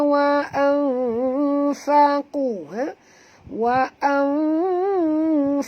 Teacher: Wa aqamus salata wa anfaqu, wa anfaqu, nun mati bertemu fa, kita kena sorokkan bunyi nun ke dalam fa disertai dengan dengung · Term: ikhfa haqiqi